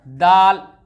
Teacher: दाल का भी मखरज है जुबान की नोक और सनाया उलिया की जड़